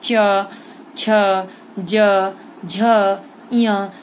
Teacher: तालव्य वर्ण कहा जाता है, मतलब तालु से उच्चारित होने वाला